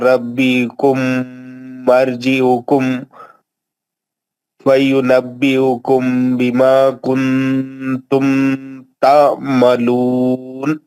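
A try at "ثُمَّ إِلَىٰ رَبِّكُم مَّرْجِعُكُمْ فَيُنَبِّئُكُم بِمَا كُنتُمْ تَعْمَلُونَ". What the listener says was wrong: ایک منٹ, ربی حکم نہیں ہے یار.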